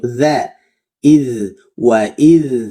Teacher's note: Za tipis, lidah di bawah, rileks, senyum.